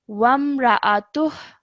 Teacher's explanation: we are producing a slight ha sound at the end, joining the ta to the ha.